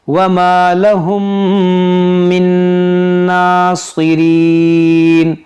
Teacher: میم ساکن کے بعد دوسری میم ہے تو یہاں پر کیا ہوگا؟ ادغام شفوی